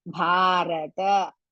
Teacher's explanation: Bha is mahaprana and dirgha. Ra is hrisva.